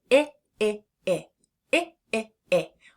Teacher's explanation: When we say the short I sound I our mouth is much more closed than we're when we're doing the short a. We are having some tension in the side of our cheeks right there in the corners of our mouth.